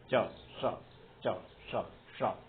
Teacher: चा बोलते समय पर जीभ जहां लगी है उसी जगह पर जीभ को लगाने के बाद जो उच्चरित होगा वो श होगा। च श च श श। तो ये तालव्य श।